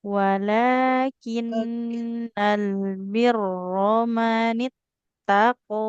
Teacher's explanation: rnya enggak boleh panjang karena fathah enggak ketemu alif